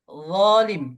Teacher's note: Zo pangkal lidah ditarik ke atas sehingga menebal suara itu. Ya, naik ke atas sedikit.